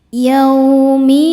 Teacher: Maka lam ini mengandung dua lam. lam sukun dan lam fathah maka bacanya masuk langsung ke lam kedua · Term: alif lam syamsiyah